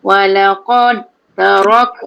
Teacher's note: Dal tu jangan bunyikan sebab dia tak ada tanda mati pun.